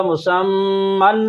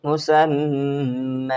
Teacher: تنوین کے نون کو الف سے بدلنا پڑتا ہے. مسمن سے مسمى. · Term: وقف بالابدال